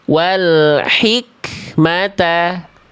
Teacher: Kaf sukun itu punya sifat percikan nafas.